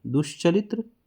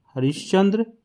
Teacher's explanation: च, छ भी जो है वो तालव वर्ण ही है, यानी तालव वर्ण है, इसलिए ये तालव स में बदल रहा है।